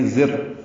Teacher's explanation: اب را پر پڑھیں گے، را پر زبر ہونے کی وجہ سے. الف لام نہیں پڑھیں گے، ادغام ہو رہا ہے، ادغام شمسی ہے